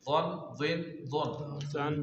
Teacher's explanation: ضاد ایک تو موٹا ادا ہوگا، دوسرا زبان کی کروٹ اوپر کی داڑھوں کی جڑ سے لگے گی